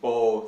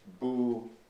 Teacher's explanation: the long o in bo that is now pronounced bu in much of Iran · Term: majhul vowels